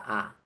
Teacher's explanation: la lengua está en su punto más central porque la lengua no va ni adelante ni atrás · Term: vocal baja